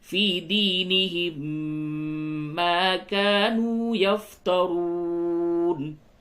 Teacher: میم ساکن کے بعد میم ہے، یہاں پہ بھی ادغام ہوگا